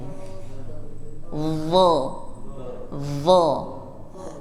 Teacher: Nah, jadi kalau digambarkan lidahnya itu seperti ini, set, ujungnya naik tapi tengahnya seperti ada gayung